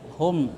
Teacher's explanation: Jadi mimnya itu dibaca terang di bibir dan mulut tertutup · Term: izhar syafawi